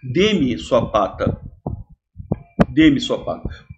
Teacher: o pronome oblíquo átono, em Portugal, é átono mesmo, é sem força nenhuma, é fraquinho